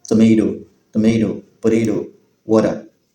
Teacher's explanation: the T is tapped in such a way that it sounds like a D or an R slightly